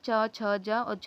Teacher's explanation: जो चा वर्ग होता है उसका उच्चारण स्थान तालव्य से होता है